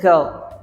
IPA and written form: ɡɜːl (girl)